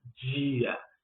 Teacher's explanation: como se estivessem aí juntando um DJ e um I quando dizemos dia